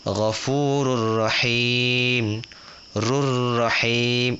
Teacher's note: Ra tu masuk ke ra yang depan dia. Sebab tu kita kata idgham. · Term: idgham bila gunnah